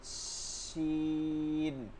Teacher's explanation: জিহ্বার মধ্যখানটা তালুতে লাগাইতে হবে, মধ্যখান থেকে একটা বাতাস চলে আসবে